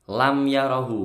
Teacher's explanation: Lam yarahu, mim sukun ketemu ya, ini idhar syafawi, maka bacaannya tidak boleh dengung.